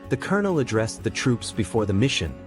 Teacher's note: Its pronunciation derives from its French and Italian roots, where the L sound is silent.